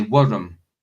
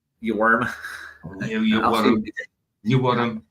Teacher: We roll our R's where I'm from in Scotland.